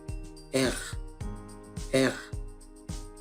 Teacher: se pronuncia con la úvula o la garganta, como la R francesa, el clásico estereotipo de este idioma, R, R, y al sonido lo conocemos como gutural, R.